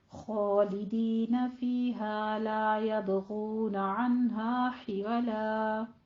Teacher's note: آگے دیکھیے ذرا، خالدین فیہا لا یبغون عنہا حولا، خو کو پر پڑھیں گے، آگے فیہا میں یا مدہ اور الف مدہ، لا یبغون، لا کو الف مدہ کو منہ کھول کے 2 کاؤنٹ کرنا ہے